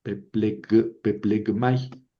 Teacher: antes de una mi, la gutural se convierte en gutural suave